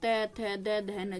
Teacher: जब भी आप बोलते हो आपकी जीभ कहां पर टच हो रही है आपके दांतों पे